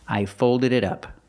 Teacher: The T in it sounds like a fast D.